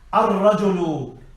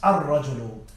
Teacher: Ra is from the sun letters and the lam is not pronounced.